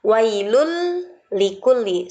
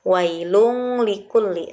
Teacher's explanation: Karena tanwin bertemu dengan huruf lam dalam 2 kalimat, maka disebut idgham bila gunnah, dibaca harus tidak disertai dengan dengung. Wailul likulli, bukan wailung likulli, salah, tetapi wailul likulli.